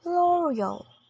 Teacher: stressing the third syllable in both American and British English